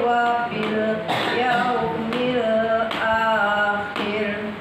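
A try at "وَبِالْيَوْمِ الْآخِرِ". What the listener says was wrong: Jangan digentak. Itu namanya gentak namanya. Yang digentak itu jatuhnya setengah ketukan ya.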